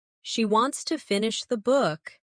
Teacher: Stress wants and book, and let to finish the be soft and fast. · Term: rhythm